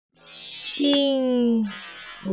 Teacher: Notice also that the second tone starts a little lower than where the fourth tone ends.